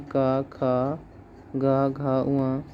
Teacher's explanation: जैसे अगर हम लिखें का, खा, गा, घा, उआ, तो इसमें घोष वर्ण जो होंगे पहला दूसरा, तो इसमें फर्स्ट और सेकेंड मतलब पहला दूसरा अघोष होगा और तीसरा, चौथा, पांचवा घोष होगा